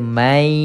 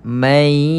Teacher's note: Ni nun kosong ini dimasukkan ke dalam ya. Ya, sebab itulah kita tidak dengar perkataan nun ini. Kita akan baca mai. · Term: idgham